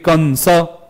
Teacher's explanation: जो ये अनुस्वार है इसी अनुस्वार का जो उच्चारण स्थान है वो नासिका है